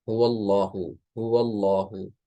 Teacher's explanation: جب اللہ لفظ جو ہے لام زبر کے ساتھ مل رہا ہوتا ہے تو اس لام کو پھر موٹا پڑھتے ہیں